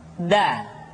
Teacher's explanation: da diucapkan dengan menyentuhkan ujung lidah kita dengan bagian gusi-gusi dua ujung dua gigi seri bagian atas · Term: huruf da